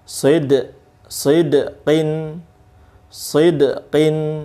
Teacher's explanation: dal sukun qalqalah ya mantul